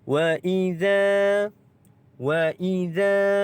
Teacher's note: za ini pula kita baca dengan kadar panjangnya adalah 2 harakat kerana mad asli huruf alif, maka kita baca dengan kadar 2 harakat.